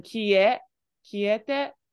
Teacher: you're doing a little bit of an English rising like intonation here. So you're doing kie, kiete, but this is just kiite.